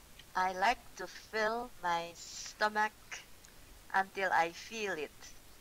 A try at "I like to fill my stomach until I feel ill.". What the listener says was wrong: Not quite. Until I feel what? Not it. I feel. Ill. Yeah, until I feel ill.